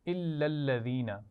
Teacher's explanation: الا الذین، یہ دونوں الفاظ ملا کر پڑھے جا رہے ہیں اور دونوں لام پہ تشدید ہے تو آپ سختی سے پڑھیں گے